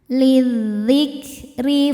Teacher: Hamzahnya dibuang karena kemasukan lam jar lam dengan harakat kasrah. Lizzikri huruf ro dibaca secara tarqik karena berharakat di bawah. Cara bacanya ditipiskan.